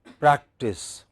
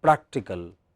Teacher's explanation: Practice, which part of the word is stressed? First part. Practical, it is still the first part.